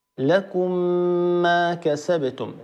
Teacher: في اخرها ميم ساكنه ما في اولها ميم مفتوحه تدغم الميم في الميم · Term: الادغام, الإدغام